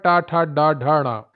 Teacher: टा वर्ग आता है मूर्धा में, तालु का अगला भाग। जब हमारी जीभ ऊपर लड़ती है जाके ट, मूर्धन्य इसको कहते हैं, मूर्धन्य।